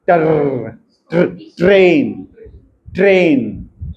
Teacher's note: Soft palate is raise, setting of the nasal passage, active articulator strike against the passive articulator several times. अब ये intermittently है ना, as a result the air escapes between the active and passive articulators intermittently, मतलब रुक रुक के। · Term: ट्रिल्स